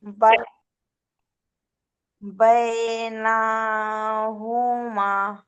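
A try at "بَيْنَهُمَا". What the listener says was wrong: নুনটা টান হয়ে যাচ্ছে, নুন টান হবে না।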